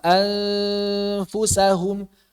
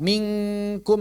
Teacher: Seperti menggabungkan suara nun dengan huruf yang berikutnya. Misalnya nun bertemu dengan fa, maka makhrajnya sudah siap-siap di fa. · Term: nun mukhfa